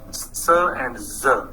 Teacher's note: There are these two sounds, s and z. They are alveolar fricatives.